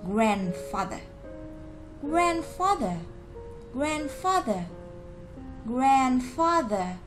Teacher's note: trong âm của nó rơi vào âm tiết đầu tiên, nên chúng ta sẽ đọc cái âm tiết đó mạnh hơn một chút, thành grandfather.